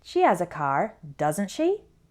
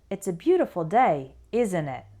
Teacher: if I use a question tag with my voice going up at the end that means I'm really asking a question to confirm · if I say a statement with the question tag and my intonation goes down at the end that means I'm not really asking a question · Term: intonation going up, intonation going down